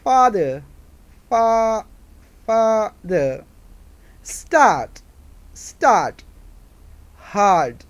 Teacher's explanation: The jaws are wide and lips are neutrally opened. It is unrounded sound because the position of lips is not rounded.